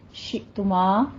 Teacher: شئتما میں حمزہ پہ جھٹکا کرنا ہے، آگے میم کا الف مدہ ادا کرنا ہے